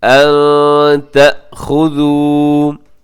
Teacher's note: नून साकिन के बाद ता है, तो यहाँ पे आप इख़फ़ा करेंगे, आवाज़ को नाक में छिपाएंगे।